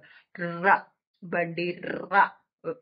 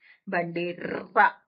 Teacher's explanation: కంపనలు వినిపిస్తూ ఉంటాయి కనిపిస్తూ ఉంటాయి ఆ నాలిక ఒకటేసారి కాదు రెండు మూడు సార్లు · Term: కంపితము